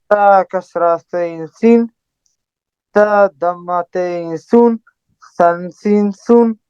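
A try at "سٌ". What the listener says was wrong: Very good.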